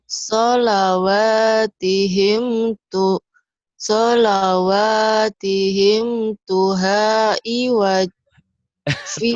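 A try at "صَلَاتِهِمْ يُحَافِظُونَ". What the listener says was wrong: Mana atuh yuhafizun bukan tu bukan yu bukan tu yu. Salawatihim yuhafizun.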